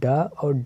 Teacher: इनके उच्चारण में जीभ जो है पहले ऊपर उठकर मूर्धा को स्पर्श करे और फिर झटके के साथ नीचे गिरे। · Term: उच्छिप्त व्यंजन